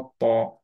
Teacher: ত গামে টাচ খাবে, টিতে টাচ খাবে না একদমই